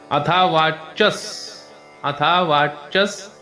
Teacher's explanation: विसर्ग आहे पण विसर्गाच्या नंतरचा शब्द स आहे त्यामुळे सायलेंट स तिथे